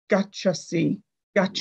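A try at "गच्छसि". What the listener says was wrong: Gachasi. It's not so much the stress that I detected a slight lengthening of the vowel, gachasi. Gachasi.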